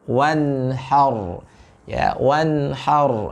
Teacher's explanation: huruf ra tafkhim, sedangkan huruf ha-nya tipis. Ya, jangan langsung wanhar.